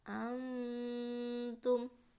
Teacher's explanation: Nah nun sukunnya mendengung dimasukkan ke huruf ta, antum. Nah seperti itu ya. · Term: ikhfa hakiki